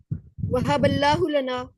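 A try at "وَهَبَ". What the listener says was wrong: वहाबा, इसको वहाब नहीं कहना, ठीक है, इसको वहाबा ही कहना, ठीक है। नाउजुबिल्लाह हम करते हैं ना, वहब वहब, अब ये इसका माना हो जाएगा और अता कर, ठीक है। ये बन जाता है अमर, ठीक है। इसका मतलब हो जाएगा और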